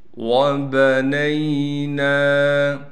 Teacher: نون کے بعد الف ہونے کی وجہ سے نون کو ایک الف کی مقدار کھینچیں گے